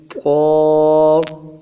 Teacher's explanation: سب سے پہلے لفظ قا کو ہم مخرج کے ساتھ ادا کرنا سیکھیں گے۔ قا، ایک الف کی مقدار میں اس کو کھینچنا ہے، موٹا اور پر پڑھنا ہے۔ اس کا مخرج ہے زبان کا سرا اوپر کے تالو سے لگے اور زبان کا بیچ ساتھ ساتھ اٹھانا، اس سے قا ادا ہوگا، ورنہ یہ تا بنے گا۔